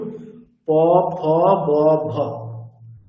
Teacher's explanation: দুটি ঠোঁট উপরের ঠোঁট নিচের ঠোঁট পুরোপুরি স্পর্শ করছে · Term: অষ্ঠ